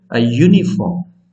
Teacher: So the sound begins with ya, which is a consonant sound. So we have a before the noun.